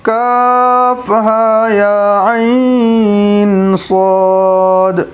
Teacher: تو کاف، عین اور صاد پر مد کا نشان ہے، ان تینوں حروف کو کھینچنا ہے۔ ہا اور یا کو بھی کھینچنا ہے لیکن ایک الف کے برابر۔